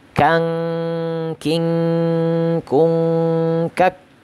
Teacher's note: ini tidak perlu menganga ya, karena dia makhrajnya itu adalah pangkal lidah sedikit di bawah makhrajnya qaf. Jadi tidak perlu menganga, cukup kita bunyikan saja bunyinya ya.